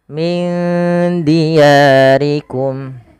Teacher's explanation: Kemudian pada lafal min diyarikum ada nun mati bertemu dengan huruf dal. Hukumnya sama sebagaimana ketika ada nun mati bertemu dengan huruf fa, yaitu disamarkan nunnya kepada huruf dalnya.